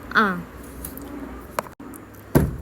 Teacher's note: Selanjutnya ada huruf ain, yaitu termasuk dalam alhalqu di tengah tenggorokan